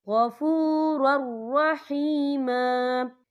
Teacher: یہاں دیکھیں غفور، را کے پر تنوین ہے، تنوین کے بعد جو ہے را آ رہا ہے، اور را جو ہے حروف یرملون میں سے ہے، تو یہاں پر ادغام ہوگا، تو ہم اسے بنا غننے کے پڑھیں گے. یاد رکھنا ہے آپ نے کہ آپ نے یہاں غنہ بالکل نہیں کرنا.